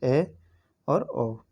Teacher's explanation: मुख द्वार आधा बंद होता है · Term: अर्ध समृद्ध